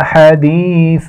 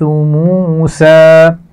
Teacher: حدیث، اس میں یا مدہ موجود ہے، سا کی آواز میں نرمی ہوتی ہے، سیٹی نہیں ہوتی، جبکہ سین کی آواز میں سیٹی ہوتی ہے